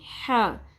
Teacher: وسط حلق سے ادا ہوگا، اور ح کو ہ کی طرح نہیں پڑھنا. اردو میں ہے حلوہ ہوتی ہے لیکن عربی میں ح.